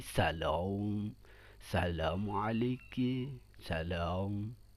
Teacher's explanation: Ada yang di antara A dan O. Ya, A dan O itu di daerah Maroko. Contohnya salam, nggak A, seharusnya salam, tapi salam, assalamualaikum, salam, gitu.